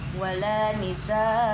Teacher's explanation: mad wajib muttasil sebab matobi'i bertemu dengan huruf hamzah dalam satu kalimat. Panjang bacaannya 2,5 alif atau 5 harokat.